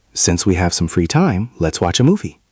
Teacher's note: Did you hear the melody? It goes up in the middle. Since we have some free time, up, let's watch a movie, down.